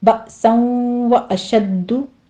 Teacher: अशद्दु में दाल के ऊपर तशदीद है, सख्ती करके आगे ज़म्मा है, होंठ खोल कर लीजिए।